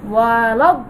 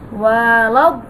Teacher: আমরা যখন দ পড়বো তখন দটা কিন্তু 4 আলিফ টানবো, কিন্তু শেষে গিয়ে আমরা এই লামটাকে কিন্তু ধরবো, কারণ এই দত কি লামকে ধরেছে।